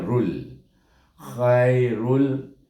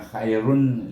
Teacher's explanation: Sebab tanwin bertemu dengan huruf lam, maka baca dengan idgham tetapi tidak ada dengung. Bunyinya rul.